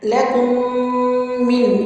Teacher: لَكُمْ کے میم کو من کے میم سے ملا کے یہاں پہ دوبارہ ادغام شفوی ہو رہا ہے